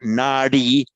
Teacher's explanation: first long a, and with a retroflected d